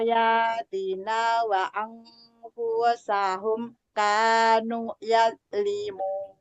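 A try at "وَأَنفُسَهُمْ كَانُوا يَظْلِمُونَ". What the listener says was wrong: Nah, nu-nya panjang sedikit lagi, Bun. Kanu.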